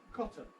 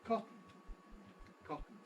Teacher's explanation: going straight from the T to the N cotton we have a process that I call syllabic consonant formation